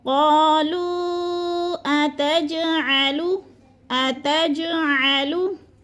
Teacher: جیم پر قلقلہ ہے، جیم ساکن ہے اور حروف قلقلہ میں سے ہے تو ادھر قلقلہ کرنا ہے، جیم کو ہلا کر پڑھنا ہے